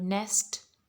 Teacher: just notice how your lips stretch a little and your jaw doesn't go as much down as it goes in ah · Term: short vowel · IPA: /e/